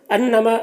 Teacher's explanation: انما یہاں پر نون مشدد ہے تو نون مشدد میں غنہ ہوتا ہے، یہاں پر 1 الف کی مقدار اس کی آواز کو، ناک میں اس کی آواز کو گنگنا کر پڑھیں گے